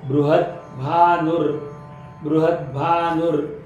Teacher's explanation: द हलंत आहे, भ पूर्ण आहे, द चा उच्चार ह सोबत येणार आहे